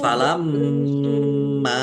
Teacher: mim tasdid mendengung, ditahan dan ditekan biar tampak mendengungnya. Falamma mim fathah alif mad thobi'i panjang dua harakat.